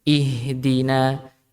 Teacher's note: Jadi ketika huruf hamzah yang dia berharokat kasroh maka dibaca tipis, maka tidak boleh ditebalkan